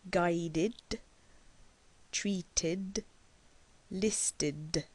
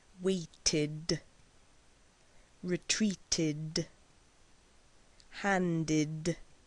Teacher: a puff of air that is not strong or aspirated voice ID is a voiced sound so you can place your hand on your throat to feel the vibration